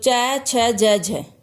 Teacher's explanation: तालु से बोला जाता है। तो च, छ, ज, झ, ये चारों वर्ण कहाँ से बोले जाते हैं? तालु से।